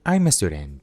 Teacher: la palabra I'm termina con el sonido consonante M y la A empieza con un sonido vocal, así que simplemente los unimos. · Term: link sound